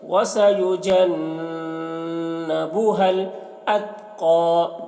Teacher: نون مشدد نون میں غنہ کر رہے ہیں. وَسَيُجَنَّبُهَا الْأَتْقَىٰ، قاف کو موٹا کر کے پڑھ رہے ہیں اور اتقا تا میں قلقلہ نہ ہونے پائے اس کا خیال رکھنا ہے کہ تا میں قلقلہ نہ ہونے پائے.